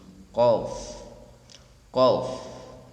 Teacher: pangkal lidah dekat tenggorokan dengan mengangkatnya ke atas langit-langit, yaitu huruf Qaf